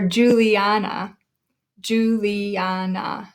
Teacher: we pronounce it emphasizing the third syllable